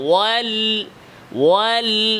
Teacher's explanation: হবে লামের আরেকটা সিফাত হচ্ছে ইনহিরাফ এই সিফাতের নাম কি ইনহিরাফ আওয়াজটা জিহ্বার আগার দুই সাইড দিয়ে যাবে সামনাসামনি না ওয়াল্লা এভাবে না ওয়াল ওয়াল আওয়াজটা জিহ্বার আগার দুই সাইড দিয়ে